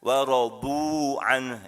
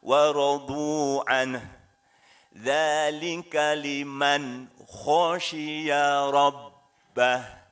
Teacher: waradu an, itu dua harokat ya, ada waw bertasyid, jangan panjang-panjang